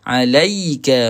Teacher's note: huruf ya, tekan pada tengah lidah. Penyek sikit.